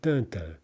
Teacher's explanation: Stressed syllable followed by unstressed. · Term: troche